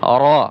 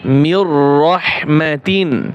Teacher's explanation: এখানে র আবার মোটা হবে, রর উপরে জবর আছে, জবরওয়ালা র মোটা হয়